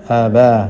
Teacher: istifal, yakni pangkal lidah menurun sehingga tipis. Kalau di fathah berbunyi a bukan o.